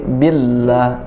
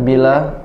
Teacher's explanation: Bi-nya, Allahnya, lamnya ada tasdid. Jadi billah, tidak bila.